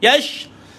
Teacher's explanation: Matikan shin ada sifat tafashi, berhamburan.